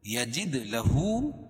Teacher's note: الٹا پیش قائم مقام واو مدہ کہ اس کو ایک الف کے برابر کھینچ کے پڑھیں گے